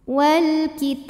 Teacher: alif lam menghadapi huruf qamariah yaitu Kaf maka lam sukun dibunyikan dengan jelas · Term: alif lam qamariyah